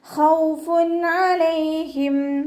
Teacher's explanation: തെൻവീനിലുള്ള നൂനിൻ്റെ സൗണ്ടിനെ നമ്മൾ വ്യക്തമാക്കി ഉച്ചരിക്കുക കേട്ടോ. മണിക്കാതെ വ്യക്തമാക്കി ഉച്ചരിക്കുക. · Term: ഇവഹാർ